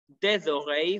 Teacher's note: ending with consonant, starting with vowel, it will take liaison, two words will be pronounced as one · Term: French liaison